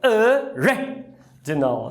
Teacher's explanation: Está em posição átona, é um schwa.